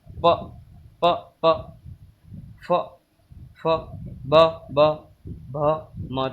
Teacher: तो हमारा इसका राइट आंसर है ओष्ठ। यह हमारे प, फ, ब, भ और म व्यंजन ओष्ठ से बोले जाते हैं।